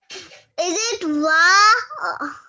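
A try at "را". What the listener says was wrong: It's ra, not wa.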